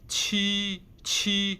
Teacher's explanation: the qi is same like G, but with aspiration